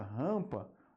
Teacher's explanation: Observe que o m não é pronunciado na palavra rampa